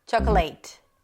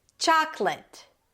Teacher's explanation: Primary stress is on the first syllable yet again.